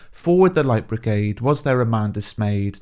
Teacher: the stressed syllables come at the start and middle of each line, and they're followed by mostly 2 syllables which are unstressed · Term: dactylic dimeter